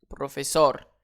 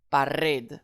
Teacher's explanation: Ce n'est pas un S. Alors, j'accentue sur la dernière syllabe.